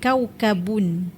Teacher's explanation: Ba merupakan huruf yang keluar daripada dua bibir.